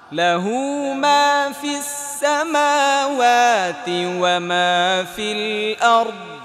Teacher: দ উচ্চারণ করতে হবে, আর আর্দ বাতাস বের হয়ে যাবে না, এটা জমে থাকবে।